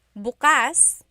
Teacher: the emphasis is on the second syllable that means open.